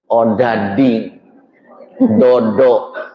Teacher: Orang Sunda ujung lidah ke tengah langit-langit. Odading, dodo, itu ke tengah langit-langit.